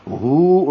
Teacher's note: ہو الٹا پیش ہے مد صلہ، 2 حرکات لمبا کریں گے، ایک الف کے برابر